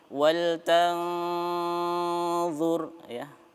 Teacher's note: Wal tanzur ra-nya dibaca tebal ya karena sebelumnya dia berharokah dhammah ya.